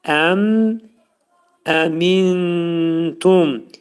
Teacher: İzhar oxunmalıdır və mim hərfini tələffüz edərkən ağız bağlanır. Yəni mim hərfi şəfəvi hərfdir. Yəni dodaq hərfidir. Ağız bağlanaraq mim səsini izhar edirik.